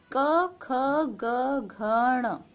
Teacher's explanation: ये आपके कंठ होते हैं, यानी कि इनकी जो ध्वनि निकलती है वो कंठ से निकलती है।